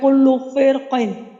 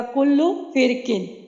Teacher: وقفاً بھی اور وصلاً بھی اس کی را چاہے پر پڑھیں چاہے باریک پڑھیں، دونوں طرح سے جائز ہے۔